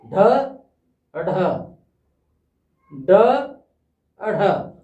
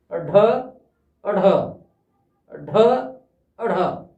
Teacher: उच्चारण जो है वो होगा तो मूर्धा स्थान से ही, लेकिन जीभ झटके से ऊपर जा लगेगी। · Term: उत्सिक्त